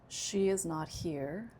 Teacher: I'm saying, she is not here, another person is here. So I'm stressing she.